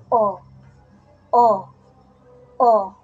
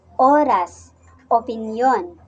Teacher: 'pag sinabi nating o, ang posisyon ng ating dila ay nasa gitna at ang bahagi naman ng ating dila ay nasa likod. Kaya ito ay binibigkas na o o o.